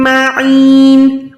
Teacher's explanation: عین کو یا کے ساتھ ملا کے لمبا کریں، حلق کے درمیان سے نکالیں